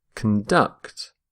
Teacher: stress the second syllable, conduct. So, water conducts heat faster than air.